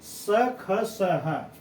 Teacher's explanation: उस व्यंजनों का उच्चारण रगड़ या घर्षण से उत्पन्न गर्म हवा से होता है। जैसे हम स बोले, स को हम बोलते हैं तो एक प्रकार से हमारे जो है कि मुंह में जैसे जीभ का घर्षण होता है, जैसे मालूम पड़ रहा है कि जीभ से कोई रगड़ रहा है, तो उस घर्षण से जो हवा निकलती गर्म होती है ना।